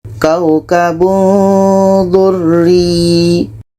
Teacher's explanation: ini ikhfa Hakiki kita baca samar dan dengung contoh kaukabun durri ketika sebut huruf tanwin kita sudah merasakan huruf Da